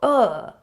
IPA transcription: ə